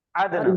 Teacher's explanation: آواز میں ٹکراؤ آ جائیں گا, زبان ٹکرا کے واپس آئیں گی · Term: قلقلہ